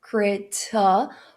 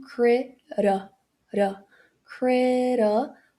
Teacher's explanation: quando esse T tá entre vogais, você pode mudar ele pro R de arara. Então, você pode fazer um crera, crera.